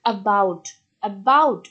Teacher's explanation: অ্যাবাউট এখানে বিটাকে কি করা হচ্ছে, জোর দেওয়া হচ্ছে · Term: প্রাইমারি স্ট্রেস